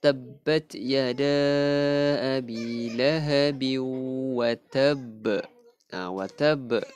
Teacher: Huruf ba yang akhir tu kan qalqalah lantunan ni besar. Kubra. Jadi kita lantunkan dia besar. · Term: qalqalah kubra